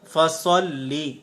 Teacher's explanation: صاد حروف مستعلیہ میں سے ہے، اگر ہم پر نہیں کریں گے تو سین کی آواز آ جائے گی، فَصَلِّ، جب یہ درست نہیں ہے، حرف تبدیل ہو جائے گا، اور حرف تبدیل کرنا یہ ایک بڑی غلطی ہوتی ہے۔